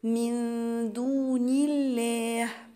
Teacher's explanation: أنا هنا قلت الله ما قلتش الله، ليه؟ لأن النون قبل اللام بتاعت لفظ الجلالة مكسورة، فيبقى أنا رققت اللام بتاعت لفظ الجلالة